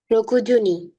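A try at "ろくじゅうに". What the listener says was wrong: Good.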